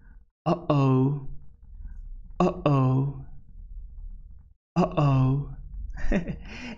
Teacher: it's a voiceless glottal stop consonant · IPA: ʔ, /ʔ/